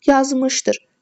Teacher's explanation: Yazmışdır sözünə vurğu ikinci həcəyə düşür.